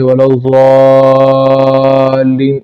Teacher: ضاد کو خوب اونچا کرنا چاہیے کیونکہ ضاد پر مد ہے، ولا الضالین اس طرح، اور پھر لام پر شد ہے تو لام کو جو ہے وہ جھٹکا سا دینا چاہیے، ولا الضالین اس طریقے سے اس کو پڑھنا چاہیے۔